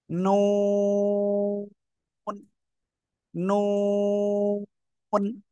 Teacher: জিহ্বার আগা, তার বরাবর উপরে তালুর সাথে লাগাবেন, লাগিয়ে সিম্পলি 4 আলিফ টানে উচ্চারণ করবেন